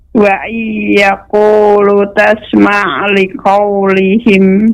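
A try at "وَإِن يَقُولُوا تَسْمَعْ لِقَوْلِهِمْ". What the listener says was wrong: Wa iyaqulu dipanjangkan idgham bi gunnahnya Ibu. Wa iyaqulu.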